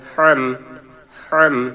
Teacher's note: ফার জবর ফা, সিনের জবর বার তাসদীদ সাব, বার জের হার জজম বিহ বিহ, বার জের বি, হার জবর মিমের জজম হাম হাম, হলকের মধ্যখান হার মাকরাজ। এটি একটি কঠিন উচ্চারণ, তাই একটু বেশি বেশি উচ্চারণ করবেন এবং চেষ্টা করবেন যেন হরফের উচ্চারণটি সুন্দর হয়, সঠিক হয়।